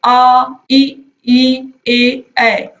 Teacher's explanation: जिन स्वरों के उच्चारण में होंठ गोल न खुल करके किसी अन्य आकार में खुले, उन्हें अवृत्ताकार स्वर कहते हैं